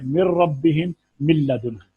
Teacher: نون ساکن اور نون تنوین کا ادغام لام اور را میں تام ہوگا